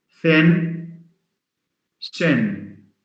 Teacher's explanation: In French, I mean, they have a problem with the th sound. So they replace all th sounds by s sounds.